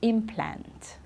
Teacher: when it's the verb the stress is at the end okay to implant okay